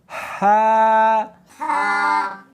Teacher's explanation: ہا، ہا نہیں پڑھنی بلکہ اس کو حلق میں سے نکالنا ہے، سینے میں سے نہیں نکالنا۔